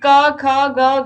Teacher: यह कंठ से आवाज आ रही है गले से आवाज आ रही है इसीलिए इनका उच्चारण स्थान क्या है कंठ है ठीक है गला